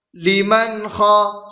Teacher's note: نون ساکن کے بعد حروف حلقی میں سے خا آ رہا ہے، اس لیے نون کی آواز کو ظاہر کر کے بغیر گناہ کے جلد پڑھیں گے، اس کو اظہار کہتے ہیں۔